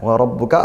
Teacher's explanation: rnya tafkim ba bertasdid dikuatkan